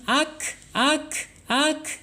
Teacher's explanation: harus keluar nafasnya karena sifatnya alhamas